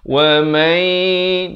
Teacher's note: Kemudian wa mai, di sini idgham bi gunnah. Daripada wa man jadi mai, masuk beserta dengung 2 harakat.